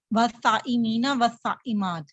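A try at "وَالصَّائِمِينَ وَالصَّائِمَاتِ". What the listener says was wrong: اس کو نا تھوڑا سا مد ہے نا تو کھینچا کریں، والصائمین والصائمات مد لگاؤ نا. والصائمین والصائمات.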